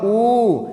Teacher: उ के उच्चारण में जीभ ऊपर उठती हुई दिखाई दी है